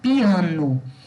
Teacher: A palavra piano, ela é trissílaba, ela é paroxítona, é o A, que é a sílaba tônica, e ela tem um hiato, que é esse I, que fica na primeira sílaba, o pi, e o A, que fica na segunda sílaba, tá?